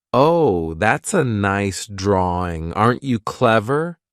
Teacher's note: the way that adults talk to Children sometimes for some reason when adults talk to Children their voice goes up like that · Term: caretaker talk